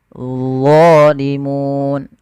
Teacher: Lidahnya untuk menyempurnakan dia mirip dengan zal, tapi pangkal lidahnya terangkat. Dan dia punya sifat namanya idbaq, melekat ke langit-langit lidah kita